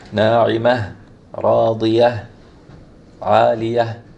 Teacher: The ta at the end is going to turn into ha, right? So we want to be able to hear that ha at the end.